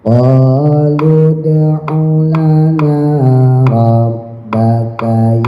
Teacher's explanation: Qalud, alifnya nggak dianggap, wawnya juga nggak dianggap, masukin langsung ke dal, dalnya pantul qalqalah sugro